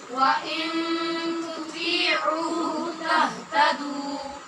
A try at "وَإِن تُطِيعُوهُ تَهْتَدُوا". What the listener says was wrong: پھر غلط پڑھ رہے ہیں آپ لوگ. آئین کے بعد واو مدہ کچھ لوگ پڑھ رہے ہیں کچھ چھوڑ رہے ہیں. وَإِن تُطِيعُوهُ تَهْتَدُوا